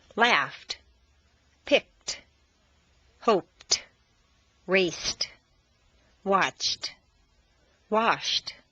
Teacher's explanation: T replaces D in the past tense after an unvoiced consonant sound